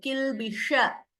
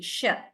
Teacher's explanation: When I say sh here, kilbisha, the tongue is slightly turning upwards towards the roof of the mouth